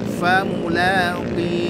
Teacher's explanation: Maka kadar maksudnya kadar ketebalan huruf qaf itu lemah sekali ya